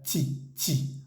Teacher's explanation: esa t en francés la t con la i suena ch chi no es ti como diríamos en español sino chi